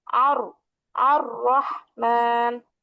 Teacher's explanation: জিহ্বার আগার পিঠ বলতে জিহ্বার আগার উল্টা যে অংশটা সেটা। তো জিহ্বার আগার পিঠ তার বরাবর উপরে তালুর সঙ্গে লাগায়া র